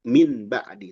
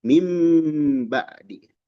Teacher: Iqlab itu merubah. Nun dirubah bunyinya menjadi mim. Ketika hadapi ba kita tidak baca min ba'di, tapi mim ba'di sambil ditahan ya. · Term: Iklab